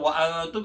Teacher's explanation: وانتم نون ساکن کے بعد تا ہے جو کہ حروف اخفا میں سے اخفا کیا جائے گا